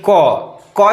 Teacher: क जो है कहां से निकल रहा है बोल के देखिए, कंठ से निकल रहा है। तो क का उच्चारण स्थान जो है कंठ हो गया।